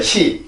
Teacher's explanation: 우리나라는 그 이제 혀랑 이 입천장의 공간이 조금 넓어서 빈 소리가 조금 많이 나고요. S는 아주 좁아요.